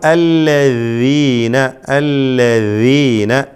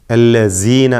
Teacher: അല്ലദീന എന്ന ലൂസായിക്കൊണ്ടുള്ള റഖാവത്തോടു കൂടിയുള്ള ശബ്ദമാണ് ദാലിനുണ്ടാവുക. ഷിദ്ദത്തിൻ്റെ വിപരീതമാണ് റഖാവ, അയവോടുകൂടി ഉച്ചരിക്കണമെന്നർത്ഥം.